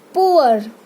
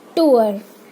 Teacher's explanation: पुअर, ऊ और अ का साउंड आ रहा है. पुअर. टूअर, कुछ लोग टूर बोलते हैं, वो रॉन्ग प्रोनाउंसिएशन है.